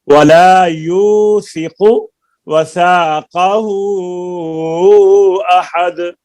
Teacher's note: यू को लंबा करें, काफ के पेश को लंबा नहीं करें